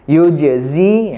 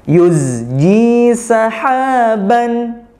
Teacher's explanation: Yang betul adalah yuzji, zai-nya alirkan dulu, baru ke ji. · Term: huruf zai